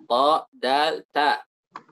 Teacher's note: Ujung lidah dengan tempat tumbuhnya gigi seri atas, naik ke bagian langit-langit atas.